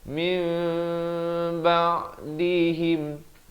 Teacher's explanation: Dibacakan dengan ditukar bunyi nun kepada bunyi mim dengan kadar panjang 2 harakat. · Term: hukum iqlab